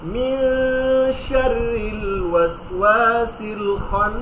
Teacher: এবার মিন শাররিল ওয়াসওয়াসিল খান্নাস, এখানেও দেখেন খান্নাসের, এখানেও দেখেন ওয়াজিব গুন্না, তাসদীদ, নুনের উপর তাসদীদ, মিন শাররিল ওয়াসওয়াসিল খান্নাস, মিন, এই যে এখানে ইকফা, এটা আমরা ইনশাআল্লাহ আপনাদেরকে পড়াবো, কিন্তু গুন্না করে পড়বে নাকের ভেতরে লুকিয়ে